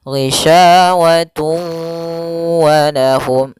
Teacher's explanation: tanwinnya dimasukkan ke huruf waw kemudian ditahan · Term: idgham bi gunah